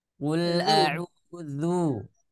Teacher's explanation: di huruf dzal itu jangan sampai dibaca tebal